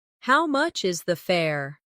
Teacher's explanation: The stress is on how much and fair.